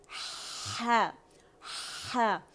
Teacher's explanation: मैंने तरीका भी सिखाया, थोड़ा सा मुंह खोले, ज़बान की जड़ नीचे करें, और आवाज़ जो है वो आपके मिडल थ्रोट से निकलेगी